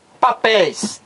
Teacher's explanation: papéis é uma palavra oxítona por quê Porque o acento aqui tônico a sílaba mais forte é a última